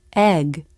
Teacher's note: it's at the end of a word like this word egg the tongue lifts in the back then releases the g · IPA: [g]